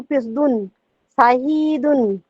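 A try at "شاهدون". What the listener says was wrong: শাহিদুন এখানে হি টানছেন কেন এটা বুঝ বলেন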